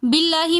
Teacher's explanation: لفظ اللہ سے پہلے زیر ہونے کی وجہ سے ہم یہاں پر لفظ اللہ کو باریک کر کے پڑھیں گے